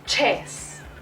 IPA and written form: ʧɛs (chess)